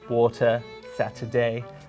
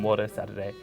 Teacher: my t's in the middle of words, such as water, Saturday, if I'm not thinking, become wadder, Sadderday